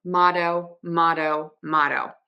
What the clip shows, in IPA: ˈmɑtoʊ